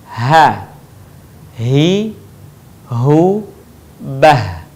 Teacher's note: huruf ha sekali lagi keluar dari tenggorokan terjauh